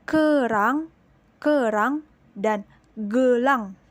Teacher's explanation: plosive pada velar atau konsonan yang bersumber dari bagian belakang lidah, yakni ada pada fonem k, huruf K, dan fonem g pada huruf G.